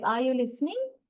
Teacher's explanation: the pitch level goes up towards the end of the sentence